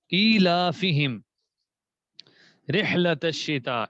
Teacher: اس میں ہا کی ادائیگی گلے کے ساتھ ہے